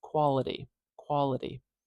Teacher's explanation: as a t even though you are not truly saying T you are saying this little tap behind the teeth it's very similar to the D but it's shorter